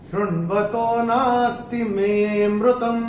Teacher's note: इसमें विलुप्त अ होता है, तो मे को हम थोड़ा सा खींच के बोलेंगे